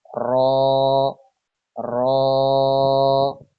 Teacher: জিহ্বার আগার পিঠ তার বরাবর উপরে তালুর সঙ্গে লাগিয়ে উচ্চারিত হয় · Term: 10 নাম্বার মাখরাজ